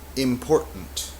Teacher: This is the glottal stop. Es lo que se llama la oclusión glotal, donde hay que cerrar la garganta, la voz, como apagar la voz, como bloquear el aire momentáneamente y luego continuar, y es como que tragas esta sílaba aquí al fin.